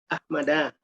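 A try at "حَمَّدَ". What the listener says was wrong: Tapi bertasdid di tengah kan udah aja tuh. Ya Hamada, bukan Ahmad. Hamada.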